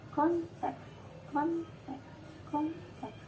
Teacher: Berarti kata konteks, kalau kita pecah menjadi silabel, maka kita rasakan jedanya di antara N dan T. Berarti konteks menjadi silabel kon dan teks.